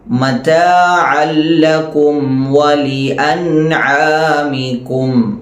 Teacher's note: അനിന്റെ മഹ്റജ് തൊണ്ടയുടെ മധ്യഭാഗമാണ് അനും അതുപോലെതന്നെ ഹാും ഈര രണ്ടു അക്ഷരങ്ങളും തൊണ്ടയുടെ മധ്യഭാഗത്തു നിന്നാണ് പുറപ്പെടുന്നത് നമുക്കറിയാം